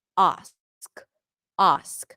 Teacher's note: In American English, the sound here is a. However, in some dialects in British English, it would be pronounced as ah.